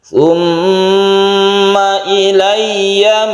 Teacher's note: mim yang bertasydid ini didengungkan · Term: guna musyaddadah